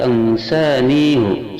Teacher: Yang kelima, lafaz ansanihu surat Al-Kahfi ayat 63, haknya dhammah dan pendek ketika wasal